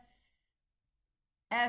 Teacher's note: the softness of this flow of air in this letter F. So it has softness.